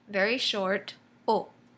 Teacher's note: There's no U in the French O. It's just one sound,